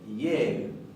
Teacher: no es nuestra letra E, ni nuestro sonido de letra E, sino que es un diptongo que se pronuncia IE.